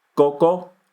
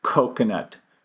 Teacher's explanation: we blow a lot of air on the K the p and the T sounds